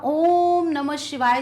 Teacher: जो थोड़ा सा खींचते हैं ओम को, वो उच्चारण वहाँ पर प्लुत स्वर कहलाता है